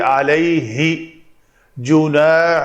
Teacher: ہا کے لیے منہ کو کھول کر تھوڑی پیچھے آواز لانا، سانس کو ابھارنا اور یہ آواز کریٹ کرنا، یہ ہے ہا کا مخرج جو کہ وسط حلق ہے